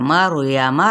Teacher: रॉ साकिन, मा कबल फतहा है यानी ज़बर है, रॉ पुर पढ़ा जाएगा। यमा की हरकत को लंबा नहीं करेगी।